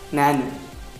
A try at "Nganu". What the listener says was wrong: Nganu. Nganu. You have to say nga. That first one. Nga. Nu.